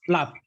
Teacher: so it's kind of breathy, that breathy sound at the end. But the open syllable for this one is just a mixture of ba and the la together, okay?